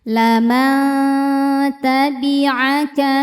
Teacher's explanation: Cara bacanya nun disamarkan ke ta disertai dengungan. Nah, ini dengungnya sedikit karena ta makhrajnya dekat dengan nun. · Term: ikhfa hakiki aqrab